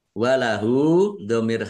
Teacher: mad silah qosir Dibaca panjang dua harakat sama dengan mad thobi'i